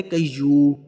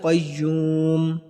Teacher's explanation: اب اکثر میں نے دیکھا ہے جب ہم پڑھ رہے ہوتے ہیں تو ہم کہتے تھے قیو، ٹھیک ہے نا، میم کو ہم اگنور کر دیتے ہیں، تو جب وقف کرنا ہے قیوم، میم کو بھی ہم نے پڑھنا ہے